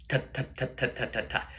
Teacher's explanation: the tongue is hitting right in between where the teeth end and where the gums start on the top teeth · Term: articulation